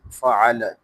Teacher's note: اس میں عین کو ادا کرتے ہوئے گلے کے درمیان سے ادا کریں گے